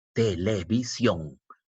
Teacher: Donde lleva la mayor fuerza de voz es sion. Sion es la sílaba tónica.